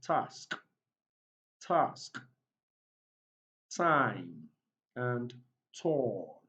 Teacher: the vocal cords around your neck there is no vibration · the front part of your tongue makes contact with the alveolar ridge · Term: voiceless alveolar, t sound, voiceless alveolar plosive